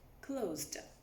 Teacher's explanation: closed s is stuck between two vowels and that's why it becomes voiced